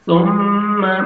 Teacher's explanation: ثم سامنے والے دو دانت ہیں ان کے نیچے زبان کو لگائیں گے تو سا ادا ہوئے گا. ثم میم مشدد ہے غنہ کریں گے نوز میں ساؤنڈ لے کے جائیں گے